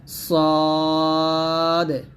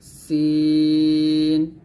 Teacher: number দুইটা দাঁত আছে এই দুইটা দাঁতের নিচের মাঝে এইখানে লাগিয়ে আমরা সদ মোটা উচ্চারণ করব সিনে পাতলা উচ্চারণ করব